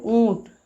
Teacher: मुख और नाक से हवा निकल रही है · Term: चंद्र बिंदु